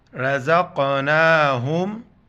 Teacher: را زبر را، را کو موٹا پڑھیں گے. زا قاف زبر زق، زا قاف زبر زق، نون کڑا زبر نا، رزقنا، ہا میم پیش ہم، رزقناہم.